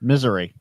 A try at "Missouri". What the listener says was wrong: You put the emphasis on the wrong syllable.